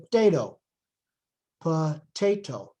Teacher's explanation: But since the stress is on the second syllable, potato, we really put potato, and the schwa, which is technically there, becomes voiceless, and the sound just basically disappears